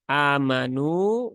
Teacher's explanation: amanu ini dia harus berbunyi a ya bukan e ya bukan juga e banyak yang begitu ya terbaca E atau · NU mad asli ya dibaca Dua harakat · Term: huruf tipis